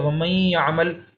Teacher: نہ ہم اخفا کر رہے ہیں نہ ہم اظہار کر رہے ہیں، بلکہ ہم اس کو ادغام کر رہے ہیں